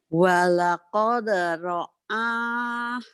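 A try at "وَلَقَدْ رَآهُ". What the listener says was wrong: Kenapa ke hidung? Jangan ke hidung. Membedakan alif dan ain.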